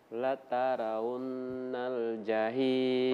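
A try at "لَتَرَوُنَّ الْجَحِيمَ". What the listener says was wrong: Masya Allah, luar biasa.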